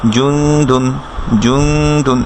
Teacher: তারপর দালের উপরে উন যোগ করে দুন, জুং দুন, জুং দুন, একটু গুন্না করতে হবে, নেজাল সাউন্ড থাকবে সেখানে , জুং দুন, জুং দুন, এভাবে হবে। আচ্ছা, এরপর নুনের উপরে